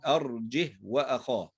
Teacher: هنا الهاء جاءت ساكنة، فعند نطقها ننطق الهاء فقط دون أن نصلها بشيء، وننطق مباشرة الحرف الذي يليها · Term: هاء ساكنة